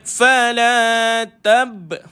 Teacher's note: Tab ada qalqalah pada bah. Lantunan kecil ataupun kita panggil qalqalah sughra.